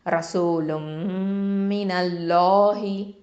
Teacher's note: லஃப்துல் ஜலாலா, இந்த லாமை வந்து தஃப்ஹீமாக உச்சரிக்கணும்